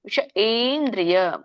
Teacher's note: ಏಂದ್ರಿಯ but ಎ ಹೇಳುವಾಗ ದೀರ್ಘ ಹೇಳಬೇಕು ವಿಷ ಏಂದ್ರಿಯ ಯ ಯ ಹೇಳ್ತಿವಲ್ಲ ಯ ಹೇಳುವಾಗ ವಿಷ ಏಂದ್ರಿಯ ನಮ್ಮ ನಾಲಗೆ ಅಂಗಳಕ್ಕೆ ಹತ್ತುತ್ತೆ ಎ ಹೇಳುವಾಗ ಇದು ಸ್ವರದಲ್ಲಿರುವಂತ ಎ ಅಲ್ಲ ವ್ಯಂಜನದಲ್ಲಿರುವಂತ ವರ್ಗೀಯ ವ್ಯಂಜನದಲ್ಲಿ ಇರುವಂತ ಯರಲವ